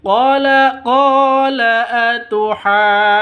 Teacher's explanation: 5 ketukan ditambah dengan dengung karena ada nun tasydid, ada gunnahnya di situ. Jadi harus dengung 2 ketukan.